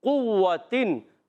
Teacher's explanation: قاف کو موٹا پڑھنا ہے اور واو پر تشدید ہے ذرا رک کر، اور قوتن دیکھیں آپ یہاں تنوین کے بعد عین آ گیا۔